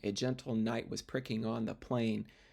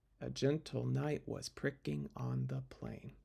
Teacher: metrical feet that start with an unstressed syllable followed by a stressed syllable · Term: iambs